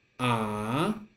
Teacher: for the second tone this is a raising tone